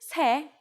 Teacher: the last consonant of set disappeared when it meets the counting unit